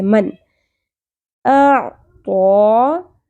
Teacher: میں سے اگر کوئی نون ساکن کے بعد آئے گا تو نون کی آواز ظاہر کر کے پڑھیں گے، چھپانا نہیں ہم نے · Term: اظہار